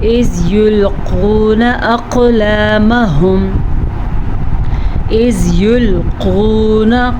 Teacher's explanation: قاف کو موٹا پڑھنا ہے، واو مدہ کے ساتھ پڑھنا ہے، یہاں پہ قاف پہ کلکلہ ہو رہا ہے کیونکہ قاف پہ ساکن ہے